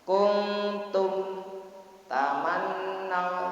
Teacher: dengan menutupnya dua bibir itu jelaskanlah mimnya mati. Kuntum tamannau, tidak perlu ditekan. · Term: idhar syafawi